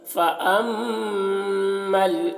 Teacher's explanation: میم مشدد ہے, میم میں غنہ کریں گے